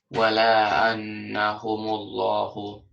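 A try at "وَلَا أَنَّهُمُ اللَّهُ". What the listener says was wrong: Don't stretch so much in wala ana like that. No, make it shorter because this is just short haraka. Try to cut it out. and then say it all at once.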